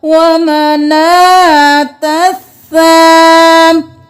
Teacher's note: یہاں پر الف لام نہیں پڑھیں گے، تا کو اس سا کے ساتھ ملائیں گے